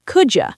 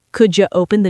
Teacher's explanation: Here, the letter D mixes with the letter Y. Together, they create a J sound like in the word juice. So, could you becomes could you.